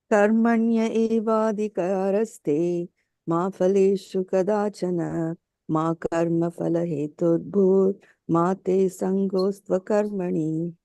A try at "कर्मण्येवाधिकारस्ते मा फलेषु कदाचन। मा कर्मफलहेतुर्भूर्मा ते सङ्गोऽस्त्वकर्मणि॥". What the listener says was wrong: Very nice. So just as you combine these two over here, try this combination. You'll feel much better.